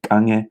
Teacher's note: the stress goes on the first syllable